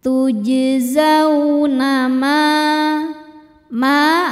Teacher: sebab ada alif sebelumnya baris fathah cara bacanya panjang dua harakat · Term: mad thbi'i zohiri